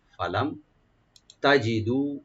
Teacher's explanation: ফা ওপেন থাকবে, লাম ওপেন থাকবে, মিম এখানে এজাহার করবো আমরা , ফালাম তাজিদু মানে পাওয়া, তা ওপেন থাকবে, জিমটাকে রাইট দিবেন,